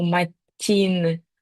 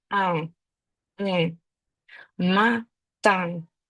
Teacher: Ми не змикаємо зубки. Ми робимо носовий звук